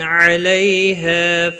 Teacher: ہا الف مدہ ہے، ایک الف کے برابر کھینچ کر پڑھیں گے